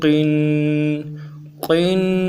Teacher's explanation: قاف کو موٹا بھی پڑھیں گے، تنوین کی وجہ سے کسرہ 2 زیر، ان کی وجہ سے قاف کو باریک نہیں پڑھیں گے، پوری پڑھیں گے۔